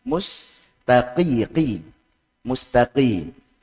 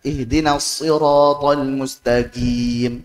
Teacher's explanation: Orang-orang Hadramaut, orang-orang Yaman biasa mengucapkan qaf dengan G.